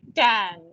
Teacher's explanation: the t sound will be, your tongue rolls up a little bit. It is not touching your teeth.